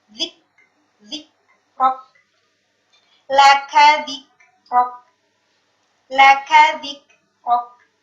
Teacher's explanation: ketika sukun perlu diperhatikan bahwasanya ada sedikit aliran nafas yang keluar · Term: huruf kaf